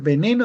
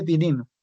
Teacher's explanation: el andino no puede en vez de decir eh veneno dice venino